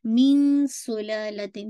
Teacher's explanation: من سلالتن. ٹھیک ہے، نون ساکن کے بعد سین آ رہا ہے، اخفا کریے گا. میوں ایسا نہیں، موٹا نہیں کیجیے گا.